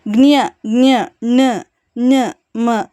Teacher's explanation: ಇನ್ನು ಅನುನಾಸಿಕಗಳು ಅಂದರೆ ಮೂಗಿನ ಸಹಾಯದಿಂದ ಉಚ್ಚರಿಸಲ್ಪಡುವಂಥ ಅಕ್ಷರಗಳನ್ನು ಅನುನಾಸಿಕ ಅಕ್ಷರಗಳಂತಂದೇಳಿ ಕರಿತೀವಿ